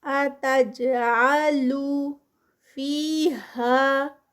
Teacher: اتجعلو فیہا، فی پہ 2 کاؤنٹس، ہا پہ 2 کاؤنٹس